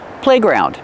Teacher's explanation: It's a compound word, so we stress both syllables.